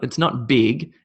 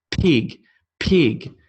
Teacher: it's just purely lips and you're shooting air out you should be able to feel on your hand it's almost like you're spitting air